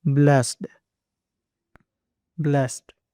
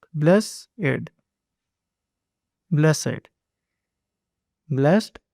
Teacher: When talking about feeling thankful or fortunate, it is usually pronounced blessed, one syllable